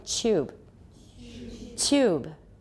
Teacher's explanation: because of palatalization it became a fricative